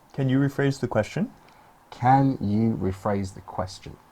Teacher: You notice the intonation going up at the end.